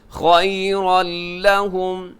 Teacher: تنوین کے بعد یہاں پہ لام ہے، لام حروف یرملون میں شامل ہے، تو یہاں ادغام ہوگا بغیر غننے کے